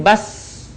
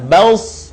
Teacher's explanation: Dan sifat serta karakternya pun tidak jauh berbeda dengan huruf sin. Yang membedakan antara sin dan shad adalah suaranya yang menebal saat kita melafalkan huruf shad.